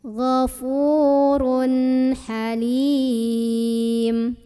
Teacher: Mad tabi'inya ya sukun sebelumnya kasrah, huruf yang disukunkannya mim. Maka dibaca panjang li-nya ini boleh 2, boleh 4, boleh 6 harokat. Tapi harus konsisten dalam sekali membaca. · Kemudian ada idhar halqi karena ada tanwin dhammah ketemu huruf tenggorokan, huruf halqi yaitu huruf ha. Maka cara membunyikan tanwinnya ini jelas bunyi an ya. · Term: mad arid li sukun